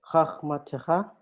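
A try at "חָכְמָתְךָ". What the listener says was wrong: Okay, the first vowel. Choch. Do you see we have kamets, and after kamets we have shava. So is it a sign that it could be a kamets hatuf? And this is the case exactly. So choch ma te ha. Choch ma te ha.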